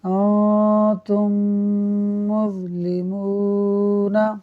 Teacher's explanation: تو ادغام شفوی کا مطلب یہ ہوا کہ ہونٹوں سے ادا ہونے والے حرف میم کو میم میں ملا دینا اور غنہ کر دینا، تو یوں یہ ہو جاتا ہے ادغام شفوی۔